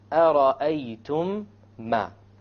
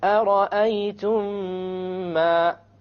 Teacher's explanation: You have once again the meme sakin followed by a meme. You merge it together and you have a ghunna. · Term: idgham shafawi